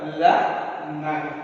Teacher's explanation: நாவின் நுனி, நம்மளோட நாக்கோட நுனி மேல்வாய் பல்லின் அடியை தொடுவதால் ல ந இந்த 2 எழுத்துக்கள் கிடைக்கின்றன.